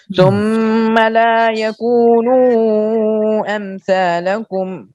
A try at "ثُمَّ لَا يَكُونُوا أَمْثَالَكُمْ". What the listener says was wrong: یہ قصر کیا ہے کہ توسط کیا ہے؟ یہ تو قصر نہیں ہے، قصر تو جتنا یکو ہے اتنا ہی نو ہے. جتنا لا ہے اتنا ہی یکو ہے اتنا ہی نو ہے. ثم لا يكونوا امثالکم.